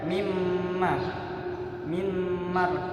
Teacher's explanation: Jadi nun sukun ini ketika bertemu mim maka disambung hurufnya mimma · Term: idgham bi gunnah